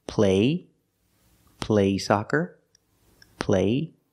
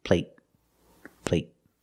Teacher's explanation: They're the same vowel, they're the long A. But the stop T at the end makes the long A a little shorter.